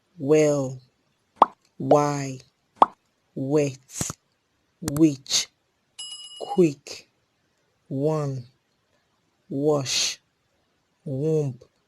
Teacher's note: This is a voiced Labio-Velar semi-vowel sound